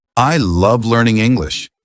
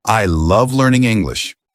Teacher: But if you add some natural intonation like I love learning English with emphasis on love, it sounds way more natural